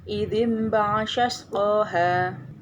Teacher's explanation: bacaan nun mati atau tanwin tidak lagi dibaca sebagai nun atau tanwin, melainkan berubah menjadi huruf mim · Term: iklab